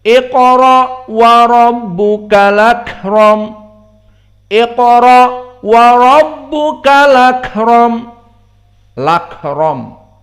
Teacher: langsung masuk kepada lam dan hamzahnya hilang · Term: naql